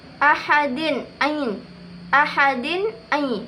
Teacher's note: kasratain bertemu dengan Ain itu hukumnya sama izhar yang dibaca jelas